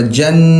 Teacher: جیم کو نون سے ملا کر یہاں پر غنہ کریں گے، ناک میں آواز پیدا کریں گے